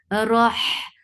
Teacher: Roh, Ra is heavy for fatha upon jaws, the sound is short and attached with ha. Ha will get sifa of raqawa, and it is from middle part of your throat.